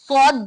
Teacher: بہت زیادہ موٹا کیونکہ صفت استعلا کی وجہ سے بھی موٹا ہو رہا اور صفت اطباق کی وجہ سے بھی ہمارا زبان اوپر تالو سے ٹچ ہو کے آواز اندر انحصار ہو کر اور موٹا ہو گیا صوت.